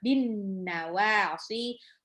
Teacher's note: Ba-nya biasa aja, terus alif lam syamsiah, jadi langsung lebur ke huruf setelahnya